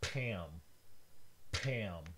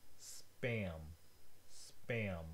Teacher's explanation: The first one is called an aspirated P. It has an extra, very strong puff of air that comes out. And this happens when it is the first sound of a word in English.